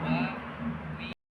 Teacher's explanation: huruf waw tidak perlu sampai merapatkan antara bibir atas dan bibir bawah